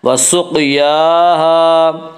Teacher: قاف میں قلقلہ ہوگا، قاف حروف قلقلہ میں سے ہے۔